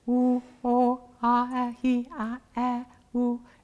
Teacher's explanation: those are all different vowels on the same note